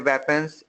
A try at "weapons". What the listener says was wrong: Weapons. Weapons. This is wrong. Don't do that. Weapons. No teeth. Get rid of your teeth. Weapons. Weapons.